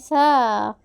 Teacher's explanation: സ എങ്ങനെ സ വളരെ സോഫ്റ്റ് ആയിട്ട് വളരെ ലൈറ്റ് ആയിട്ട് പറഞ്ഞേ സ നാവിന്റെ അറ്റവും മുൻപല്ലുകളുടെ അരികം ചേർത്തു പിടിച്ചുകൊണ്ട് പറഞ്ഞേ വളരെ സോഫ്റ്റ് ആയിട്ട് വളരെ ലൈറ്റ് ആയിട്ട്